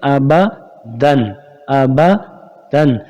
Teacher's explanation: یہاں پر غنہ نہیں ہوگا کیونکہ تنوین کے بعد حروف حلقی کا حمزہ آ رہا ہے. حروف حلقی کا حمزہ آ رہا ہے اور حروف حلقی کا حمزہ آ جائے تو وہاں غنہ نہیں ہوتا. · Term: اظہار